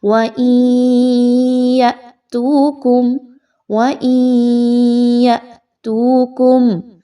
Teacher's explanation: یَأْتُوكُمْ حمزہ ساکن ہے تو حمزہ ساکن پہ جب بھی آپ کو حمزہ کے اوپر جزم کی علامت مل جائے گی تو وہاں پر حمزہ کو ہلا کر یعنی جھٹکا دے کر پڑھا جائے گا